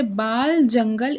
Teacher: खड़ी बोली में मूर्धन्य ल का प्रयोग मिलता है